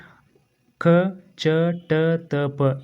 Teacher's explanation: ಈ ಅಕ್ಷರಗಳನ್ನು ನಾವು ಉಚ್ಚಾರಣೆ ಮಾಡಬೇಕಾದ್ರೆ ಕಡಿಮೆ ಸಮಯವನ್ನು ತೆಗೆದುಕೊಂಡಿರ್ತಕ್ಕಂತಹದ್ದು ಮತ್ತು ಕಡಿಮೆ ಉಸಿರನ್ನು ತೆಗೆದುಕೊಂಡಿರ್ತಕ್ಕಂತಹದ್ದು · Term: ಅಲ್ಪ ಪ್ರಾಣ ಅಕ್ಷರಗಳು